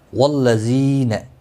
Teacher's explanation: ذی یا مدہ ہے، ایک الف کے برابر کھینچ کر پڑھیں گے